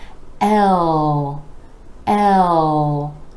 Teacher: L, with the E vowel sound rolling into the dark L, where the back of the tongue is coming back and down